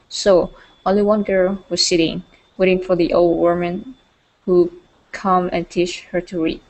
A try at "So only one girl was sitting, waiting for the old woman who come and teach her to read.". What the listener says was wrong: Good. Okay.